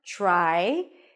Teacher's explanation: The T sounds a little bit like a CH sound or a lot like a CH sound